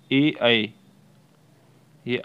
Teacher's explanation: आगे से हैं जीभ के अगले सिरे से अग्री छोटी इ बड़ी ई ये दोनों आगे से हैं।